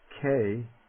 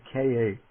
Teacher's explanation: each type of consonant is first divided into a non-aspirate that's like the k and then an aspirate is like the kh